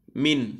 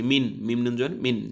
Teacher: আমাদেরকে স্পষ্ট করে পড়তে হবে কোন গুন্না নাই কোন মিলানো নাই